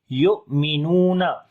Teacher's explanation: حمزہ کے اوپر جزم ہے جھٹکا دے کر پڑھیں گے. صفت شدت اس کے اندر آ جاتی ہے.